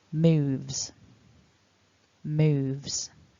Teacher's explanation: because of that voiced v when we're adding our s actually it's voiced so it's a even though we write it as an s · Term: it's a Z